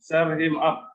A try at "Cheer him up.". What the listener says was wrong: Cheer him up. Ya, jadi ini dibaca cheer ya, bukan char ya. Ya, cheer him up.